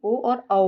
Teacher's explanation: जिन्हें बोलने के लिए कंठ के साथ साथ ओठों की भी जरूरत होती है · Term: कंठ ओष्ठ स्वर